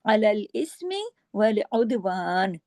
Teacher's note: عدوان میں دال پہ کلکلا ہوگا کیونکہ قطب جد کا لیٹر ہے